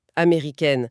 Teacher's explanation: L'air repasse par la bouche, la nasalité disparaît et la langue vient frapper le palais pour prononcer ce ha distinctement. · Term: consonne percutante